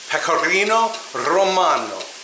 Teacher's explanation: Do you like how I trilled my R's?